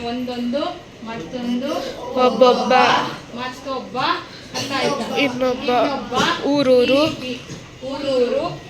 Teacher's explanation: ಈ ರೀತಿ ಪೂರ್ವ ಪದದ ಅಂತ್ಯದ ಸ್ವರಾಕ್ಷರದಲ್ಲಿ ಲೋಪವಾದರೆ ಅದನ್ನ ಏನಂತ ಕರಿತೀವಿ? ಲೋಪ ಸಂಧಿ